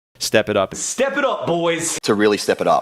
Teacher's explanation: The words step and up are stressed. The word it is unstressed. The content words with the meaning are typically stressed, and the function words, like it, are rushed through and de-emphasized.